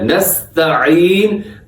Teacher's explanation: لوگ جلدی میں اس کو نستعین پڑھ دیتے ہیں، یہاں حمزہ پڑھ دیتے ہیں جبکہ یہاں پہ عین استعمال ہوا ہے، نستعین، تو معنی بالکل تبدیل ہو جاتے ہیں اگر آپ نے عین کی درست ادائیگی نہ کی۔